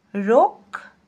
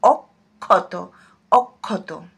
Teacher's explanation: কিন্তু শব্দের মাঝে বা শেষে যদি বসে, তাহলে উচ্চারণটা এরকম হয় ক খ বা খ খ, এভাবে উচ্চারিত হয়।